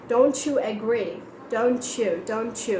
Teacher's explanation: when t and y kind of words are together then american people tend to pronounce it as like cha sound so like don't you agree don't chew don't chew it's not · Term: ch sound